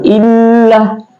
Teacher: dibaca ditekan atau ditebalkan ya, atau seakan-akan lam itu ada 2, illa ya, ditekan illa. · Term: tasdik